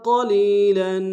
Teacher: قلیلا میں قاف کو موٹا ادا کریں گے